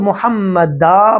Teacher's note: یاد رکھیں محمد کے دال کے اوپر فتحتین ہے، یہاں دو زبر ہیں، فتحتین ہے۔ فتحتین پہ جب اسٹاپ کرتے ہیں تو الف کی آواز آتی ہے، الف آ جاتا ہے اور ایک زبر ختم ہو جاتی ہے۔